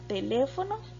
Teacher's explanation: la palabra teléfono tiene el acento en la sílaba le, que está en la antepenúltima posición